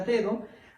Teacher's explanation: la primera D es una oclusiva alveolar, mientras que la segunda D, de do, es una fricativa dental